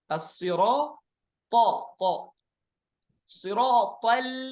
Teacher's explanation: at-ta tebal, al-lam tipis